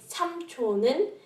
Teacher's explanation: That's because the silent circle-shaped consonant is, silent. The two consonants, 는 and the silent one, blend together and sound like just 는